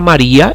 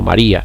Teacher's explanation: la palabra maria lleva el golpe de voz en la vocal cerrada